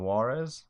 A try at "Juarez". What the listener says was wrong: It should be Ha because it's a J.